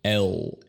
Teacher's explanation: La primera L, ya que está en la final de la sílaba, es una L obscura. El. La segunda L es una L ligera porque está en el inicio de la segunda sílaba.